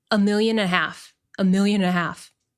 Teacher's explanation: This and basically disappears. It's almost impossible to hear. It sounds like a million and a half.